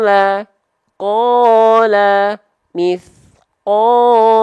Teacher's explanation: pastikan Mad thii teman-teman dua harakatnya tepat jangan sampai Kepanjangan kelamaan atau kependekan kecepatan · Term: Mad Thobi'i